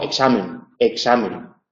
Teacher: esa K por estar en posición implosiva tiene un alófono es como una G pequeñita · representa dos fonemas una velar oclusiva sorda en posición implosiva y una alveolar fricativa